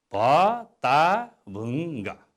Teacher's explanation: ङको उच्चारण होइन, अन्तिममा गको उच्चारण गर्नुपर्छ। भत्ताभुङ्ग, अनि मात्र शुद्ध उच्चारण हुन्छ।